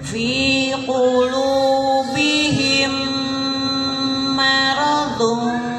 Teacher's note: Mim ketemu mim, mim mati ketemu mim mati. Jadi bacanya didengungkan ya. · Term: idgham mislen